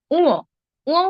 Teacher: জীভের গোড়ায় মূলত উঁ উচ্চারিত হচ্ছে বা কন্ঠে উচ্চারিত হচ্ছে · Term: কণ্ঠ ধ্বনি